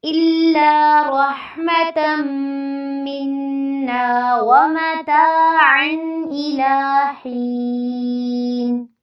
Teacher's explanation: میم مشدد ہے تو یہاں پر غنہ کرنا ہے، اور آگے نون مشدد بھی ہے تو ان دونوں پہ آپ نے غنہ کرنا ہے اور نا کو لمبا کرنا ہے۔ وَمَتَاعًا میں تا کے ساتھ مد اصلی ہے، عین پہ اظہار ہوگا اس لیے یہاں پہ نہ کوئی غنہ ہوگا نہ ہی اخفا ہوگا۔